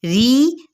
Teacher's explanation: ہے، ایک الف یا 2 حرکات کے برابر کھینچیں گے، ری، را باریک پڑھی جائے گی